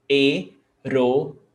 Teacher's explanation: Hiato. And remember, the H is never pronounced. It's not pronounced in Portuguese.